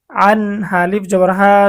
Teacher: ইজহার, নুন সাকিন ও তানভিনের পরে ইজহারের 6 হরফের কোন একটি হরফ আসিলে তখন ওই নুন সাকিন বা তানভিনকে গুন্নাহ ছাড়া স্পষ্ট করিয়া পড়িতে হয়। এখানে নুন সাকিনের পরে ইজহারের হরফ হা এসেছে, আমাদেরকে গুন্নাহ ছাড়া স্পষ্ট পড়তে হবে।